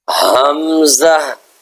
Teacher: ہا اور حمزہ دونوں کا مخرج ایک ہے، دونوں سینے سے نکلتے ہیں